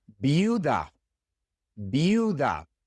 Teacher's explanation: The I makes the ee sound and the U makes the Ooh sound.